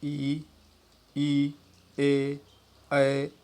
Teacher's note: तो अग्र स्वर जिसको फ्रंट वावेल के नाम से जानते हैं, अग्र स्वर बिना किसी घर्षण के हवा के स्वतंत्र या अबाध रूप से बाहर निकलने के लिए जीभ का अग्रभाग कठोर तालु की तरफ उठता है, जिससे अग्र स्वर ध्वनियों का उच्चारण होता है